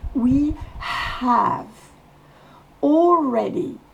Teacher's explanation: le have commence par H il faut donc souffler le H